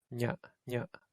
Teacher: ña is against the roof of your mouth.